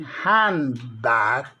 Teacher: the N in handbag often becomes an M before the P or a B, because both are bilabial sounds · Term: Regressive, anticipatory assimilation